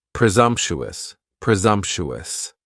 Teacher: presumptuous and presumptuous has four syllables and the stress is on that second syllable and the S almost sounds a little more like a z